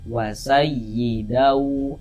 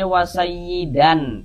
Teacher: Karena di sini yang kita temui tanwin, maka bunyi tanwinnya dimasukkan ke huruf wau. Sehingga ini kita baca wasayyidau. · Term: idgham ghunah, idgham bi gunnah